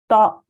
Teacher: When we are saying this, or we are joining to the hamza, it should be pronounced with a soft jerk from the bottom of the throat. The reciter must ensure that it's not exchanged with the ayn sound.